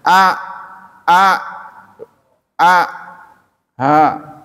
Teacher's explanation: Yang paling dalam itu H dengan hamzah. H dengan hamzah itu sama keluarnya. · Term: huruf halqi